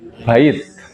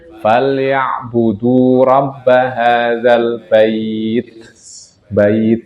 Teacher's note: ta huruf ta kalau berhenti kan ada angin keluar